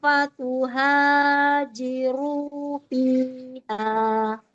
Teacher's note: kepanjangannya cuman dua harakat masing-masing madnya